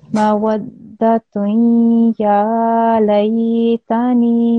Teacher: It has a dhammatain on top of it, yeah? So when you join this ta with this ya, a nasal sound should be produced for 2 seconds. · Can you hear that when you joined the sta with the ya, a slight nasal sound, like a noon type of sound was produced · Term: idgham naqis